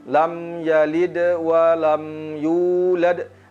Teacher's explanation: Yang pertama kita perhatikan adalah huruf mimnya jangan kita terputus seperti membacanya lam yalid wa lam yalid wa lam yulad, tetapi huruf mim mengalir kepada huruf selanjutnya lam yalid wa lam yulad.